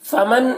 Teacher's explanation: فمن یہاں پر نون ساکن کے بعد حروف حلقی میں سے ہا ہے، تو نون میں اظہار ہوگا، نون کو ظاہر کر کے جلد پڑھیں گے